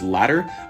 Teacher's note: in the United States, we'd pronounce both of these words as ladder, but in Britain, they would pronounce one as lada and the other as lata or something like that.